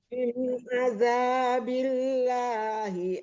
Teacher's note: min nggak boleh didengungkan ya. Min ada, jangan tertahan lama.